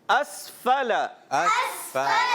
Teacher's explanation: حمزہ کی ادائیگی کلیئر کریں گے, واضح, سین کو ساکن رکھیں گے, ہلائیں گے نہیں.